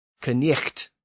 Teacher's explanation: you had to go from the throat to the front of the mouth, back to the palate, and then back to the front of the mouth. Knicht. So that's a lot of action for a simple little word.